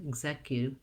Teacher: And then my CU, it says, my U says a glide and not just the oo sound. So we don't have an oo here, we have a U, Q, execute.